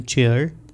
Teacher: ये दोनों voiceless sounds ट और श ये मिलके च साउंड बनाएंगे। ड एंड य ये दोनों वॉइस्ड साउंड्स हैं, तो ये दोनों मिलके वॉइस कंसोनेंट बनाएंगे ज।